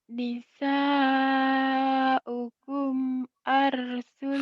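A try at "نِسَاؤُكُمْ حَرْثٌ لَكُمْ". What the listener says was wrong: ha. Oh iya, kamu penyakitnya kalau ha suka dibaca a. Oh, saya baru ingat tuh. Bukan a tapi ha. Harsul lakum.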